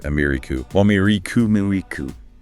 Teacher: The stress is on the second syllable, mer.